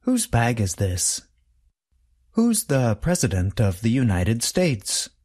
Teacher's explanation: The contraction and the possessive adjective both sound the same. They are both pronounced with the sound of the letter Z at the end.